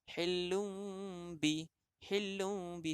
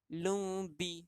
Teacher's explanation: nun mati bertemu ba, maka dia merupakan iklab kerana sebutan ini seumpama nak menyebut huruf mim